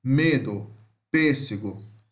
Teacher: semi-fechada frontal oral não arredondado